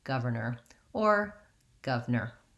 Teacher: to make sure you have that tight back american arm but it's unstressed so you're not going to be saying governor with a strong r it's going to be light and unstressed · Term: tight back American R